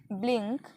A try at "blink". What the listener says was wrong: Good job.